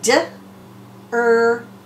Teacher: they heard the word dirt, they're not hearing a vowel in there. They're hearing d-er-t. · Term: bossy R